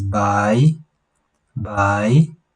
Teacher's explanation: it is a rising tone